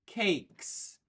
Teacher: cake is voiceless so we keep our voice off for the S at the end